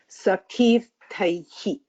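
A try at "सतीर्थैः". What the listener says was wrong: No, you're stressing on this one. Sati is plain.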